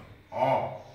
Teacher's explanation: घाँटीको अत्यन्त भित्र भाग, एकदम गहिरो भाग, घाँटीको भित्री भागबाट उच्चारण हुने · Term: अतिकण्ठ